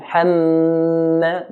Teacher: Because meme has a shadda, there's an automatic nasalization sound coming.